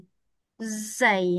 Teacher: So, zai tidak ada angin tapi dia ada safir.